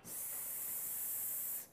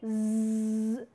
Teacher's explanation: in the former sound, there is no vibration. However, in the later sound, you find that a heavy pressure in the form of vibration is taking place, right. So, that is how we are classifying voiced sound and unvoiced sound.